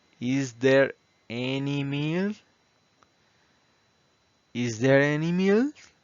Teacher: Ahí van elevando un poco el tono de voz.